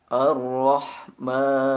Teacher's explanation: Maka bunyikan panjang huruf mim dengan 2 harokat atau 1 alif, karena terdapat mad asli atau tanda badal alif pada huruf mim.